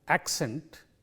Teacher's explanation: It simply means that in this word, which is accent, there are two syllables in this word, and the stress is on the first syllable of this word